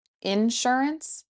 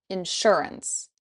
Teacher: You can say insurance or insurance. You can put the emphasis on in or sure. Insurance, insurance.